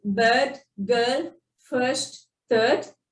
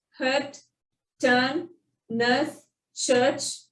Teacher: So IR, ER, OR and UR, everything follows the bossy R concept. Here we don't roll our R's. The R remains silent. It changes the sound.